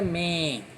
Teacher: Men faz com que esse E vire em, como se fosse um E com um tio. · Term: som nasal